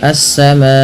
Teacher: panjangkan bunyi ma karena ia dihukumi dengan bacaan mad wajib muttasil. Terjadi sebab karena adanya hamzah yang datang setelah huruf mad berupa alif, maka bunyi suara madanjangkan empat atau lima harakat. · Alif lam syamsiyah yaitu alif lam yang tertulis dan kemudian diidgamkan kepada huruf setelahnya itu huruf sin sehingga sinnya berharakat tasdid. Kemudian pelafal assama panjangkan bunyi ma karena ia dihukumi dengan bacaan mad wajib muttasil.